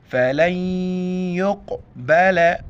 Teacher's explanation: قاف کو موٹا پڑھیں گے اور قاف کے اوپر قلقلہ کریں گے. قلقلہ کہتے ہیں آواز کا منہ کے اندر راؤنڈ کرنا اور لفظ کو جھٹکے کے ساتھ پڑھنا.